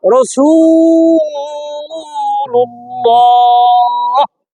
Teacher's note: আল্লাহ লামের ডাইনে পেশ মোটা করে পড়তে হয় ল।